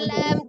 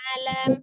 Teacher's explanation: Dibuka lagi rongga mulutnya ketika fathah tidak ke hidung ya.